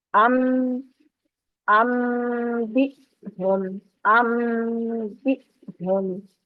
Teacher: नून की आवाज जो है ये गुन्ने के साथ होगी, इकलाब की आवाज, और ये नाक में आवाज आएगी आपकी। · यहाँ पर नून की आवाज नहीं आएगी बल्कि मीम की आवाज आएगी और साथ में आगे बा पढ़ा जाएगा। तो नून को मीम की आवाज में बदल दिया गया, तो इस वजह से, क्योंकि नून साकिन के बाद बा आ रहा है।